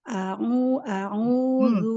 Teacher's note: Ainnya jangan masuk ke hidung ya, jangan jangan sengau, dia bukan khoisum, bukan huruf guna.